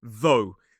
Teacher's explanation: So this time we have a voiced th. O. So this time the OUGH is pronounced as an O sound.